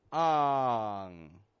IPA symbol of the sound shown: ŋ